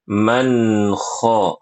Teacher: Man kho, nggak boleh qalqalah nun sukunnya.